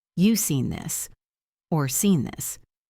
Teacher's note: a short sentence that sounds like a statement but has a questioning melody, it is likely a question with a dropped auxiliary verb.